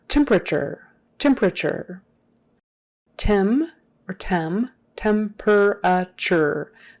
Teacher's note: That T is typically pronounced like a CH. If you were to pronounce it with a regular T, it would sound like temperature, but no one says it like that.